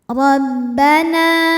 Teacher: ra dibunyikan dengan tebal dengan cara mengangkat pangkal lidah kita. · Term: tafkhim